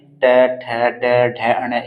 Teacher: मूर्धन्य क्यों कहते हैं क्योंकि यहां पर मूर्धा के द्वारा होते हैं इसलिए इनको यहां पर मूर्धन्य वर्ण कहा जाता है ठीक है